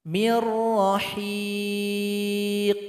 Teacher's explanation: perhatikan contoh nun sukun berjumpa dengan roh maka dibaca idgham bilagunnah nun sukun mesti dilebur kepada huruf ro tapi tidak bingung